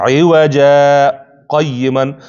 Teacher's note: عوجا تلفظ به یو شی ده خو یوازې آواز به قطع کېږي او سا به نه ماتېږي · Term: سکته